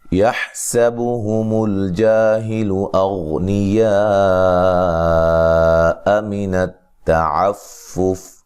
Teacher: یہاں حا کو واضح نکالنا اس کے مخرج سے، ٹھیک ہے، سین کو باریک سیٹی سے ادا کرنا ہے